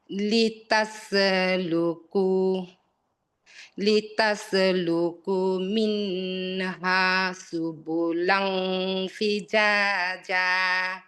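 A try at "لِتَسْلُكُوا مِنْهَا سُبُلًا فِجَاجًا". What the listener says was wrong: লি লি তাস তাস হয়ে যাচ্ছে। লি তাস তাস আমি ক্লিয়ার উচ্চারণ করে বের হয়ে যেতে হবে। আপনি যদি তাসও টাইপের করেন তখন এটা কলকলা মনে হবে। না আপনার কলকলা মনে হচ্ছে।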